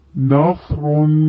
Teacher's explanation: صاد کی ادائیگی موٹی اور سیٹی والی ہوتی ہے، جیسے نصرن.